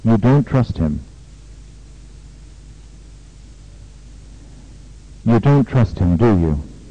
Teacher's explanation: that the person he is talking to will agree with him in this case the question tag has a falling tune